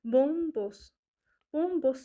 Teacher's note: Bombos sözündə də əgər mən M-dan əvvələ düşür deyirəmsə, deməli ilk hecada burada vurğu olmuş olacaq.